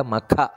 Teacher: ಮಕ ಅಲ್ಲ ಮಕ ಅಲ್ಲ ಮಖ ಮಹಾಪ್ರಾಣ